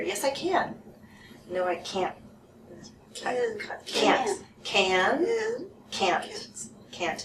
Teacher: it's good to have a long vowel for the can so people can hear